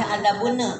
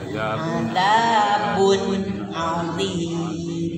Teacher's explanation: Nunnya nggak boleh dipantul. Adabun azim.